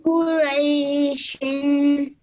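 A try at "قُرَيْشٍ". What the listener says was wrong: Excellent. Well done. Really nicely read.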